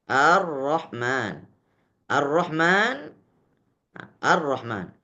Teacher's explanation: Karena alif lamnya, lam yang disebutkan tidak terdengar lagi. Sehingga langsung ke dalam huruf ro, ar-ro, padahal tulisannya al-ro, tapi dibaca ar-ro. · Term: gunnah akmal